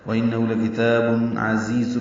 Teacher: عین وسط حلق سے ادا ہوگا. دونوں زا تیز صفیر کی آواز سے ادا کریں گے.